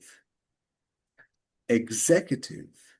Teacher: So, they're stressing the the the second syllable.